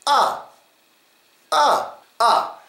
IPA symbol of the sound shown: ə